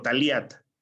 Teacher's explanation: ellos saben que lo que se están produciendo es una lateral, ¿verdad? Una L.